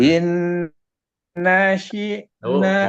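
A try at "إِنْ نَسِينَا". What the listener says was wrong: Balik lagi tuh, sinnya masih tebal itu. Sin yang tipis.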